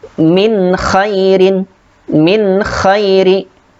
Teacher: Kemudian di sini terdapat nun sukun bertemu dengan kha, dibaca jelas